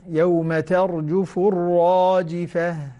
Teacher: لا تحاول تكرر الراء بزيادة